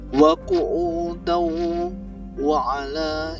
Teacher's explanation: Maka ini dibaca dengung karena hukumnya adalah idgham. Wa qu'udau wa ala, ini sama, idgham bi ghunah, tanwin bertemu dengan wawu.